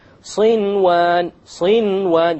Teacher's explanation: Without any ghunna, you make the noon clear and you move on. Why? Because it's in one word. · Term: idhar